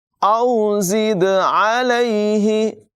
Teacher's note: زا کی آواز میں سیٹی نکالیں گے اور دال میں قلقلہ کریں گے، خوب ظاہر کر کے اس کو پڑھیں گے۔ · عین کی آواز حلق کے درمیان والے حصے سے نمایاں ادا کریں گے